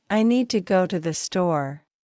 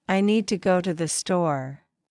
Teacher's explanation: The important words are need, go, and store. The rest are said more softly. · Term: stress pattern